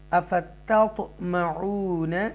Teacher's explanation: हुर्फ़े कलकला में से तौ साकिना आया है, इसलिए हमने इसको तौ इको साउंड के साथ पढ़ेंगे, जुम्बिश के साथ